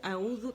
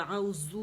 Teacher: اور دوسرا اعوذ ہے، اعوذ تو اعوذو کر دیتے ہیں، بزنگ ساؤنڈ آ جاتی ہے، زال کی جگہ ہم زا مطلب لے آتے ہیں